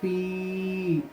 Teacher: یا مد ہے اس لیے ایک الف کے برابر اس کو کھینچ کے پڑھیں گے